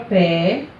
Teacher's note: A palavra pé, ela só tem uma sílaba, mas o tom dela foi mais intenso.